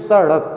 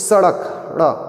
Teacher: ड़ा बोलने में आपकी जीवा मूर्धा तक तो जाएगी, लेकिन उसके बाद तुरंत से वापस नीचे आएगी। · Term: उत्क्षिप्त ध्वनि